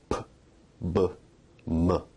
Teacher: Bilabial sounds are produced with both lips